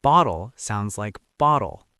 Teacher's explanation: In many accents, a T between two vowels sounds like a fast, light D.